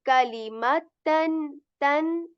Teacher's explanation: Kalimatan, this word is easier because all of the letters here have English alternatives, but you know the ta sound here in English it is ta, but here ta is a bit lighter